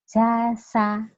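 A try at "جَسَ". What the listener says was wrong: Iya, jangan diputus. Jasa. Lagi.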